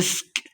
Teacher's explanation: مسک آگے تو وقف کی علامت ہے، یہاں پہ ہم نے وقف کر دینا ہے، سین پہ سیٹی کی آواز آئے گی